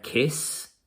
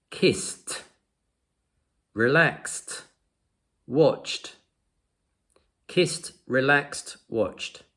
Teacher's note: This is an unvoiced verb. For unvoiced verbs, the ed sounds like a t.